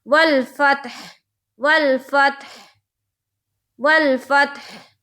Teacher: तो हा जब निकालेंगे तो समझ में आना चाहिए कि मैं कौन सी हा निकाल रही हूँ। तो ये हा हलक से निकलती है